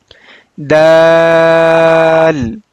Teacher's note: We will touch the tip of our tongue with the upfront teeth edge. Originate when the tip of the tongue touches the edge of the upper two teeth. · Dal originate when the tip of the tongue touches the gum of the upper two teeth.